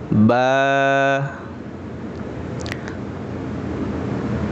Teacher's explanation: বা বলার সময় আমাদের দুই ঠোঁটের ভেজা জায়গা থেকে বলবো